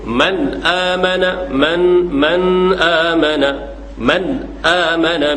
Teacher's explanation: dan jangan cenderung kepada gunah jangan ada dengung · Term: izhar